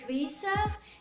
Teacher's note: in the word visa, you will make an unvoiced s sound.